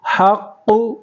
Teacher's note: یہاں پر ہا کی آواز نکالنا ہے حلق سے اور قاف کو پر کرنا ہے، قاف کے اوپر تشدید ہے۔